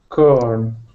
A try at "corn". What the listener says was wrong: No tongue. That's another tough one in English to get the right R sound.